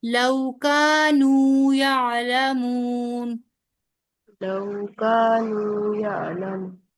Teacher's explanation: अलिफ मद्दा और फिर वाओ मद्दा दोनों एक जैसे लंबे होंगे।